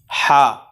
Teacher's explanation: ہا جو ہے نا وہ درمیانے حلق سے ادا ہوتی ہے